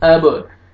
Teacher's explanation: बा हुरूफ क़लक़ला में से डबल साउंड आएगा